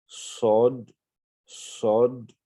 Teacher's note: Donc, la langue reste dans la partie inférieure de la bouche. Le bout de la langue reste dans la partie inférieure et puis le reste de la langue va monter vers le palais. Sod, sod. Donc, il y a un sifflement avant également.